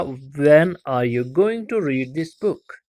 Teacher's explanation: तो बुक जो है हमारी इसमें फॉलिंग स्ट्रेस लग रही है, तो हमारा बुक वाला वर्ड जो है यहाँ पे हमारा फाइनल स्ट्रेस है, ये फाइनल सिलेबल है, फाइनल वर्ड है, उसी पे स्ट्रेस पड़ रही है।